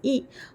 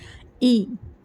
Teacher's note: हर्फ की आवाज नीचे को जाती है जैसे हमजा जेर ई जब हम जेर वाले हर्फ को पढ़ते हैं ना तो हमारे ओट अच्छे से फैल जाते चौड़े हो जाते